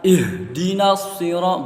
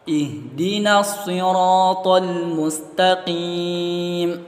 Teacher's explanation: huruf ha itu keluarnya dari pangkal tenggorokan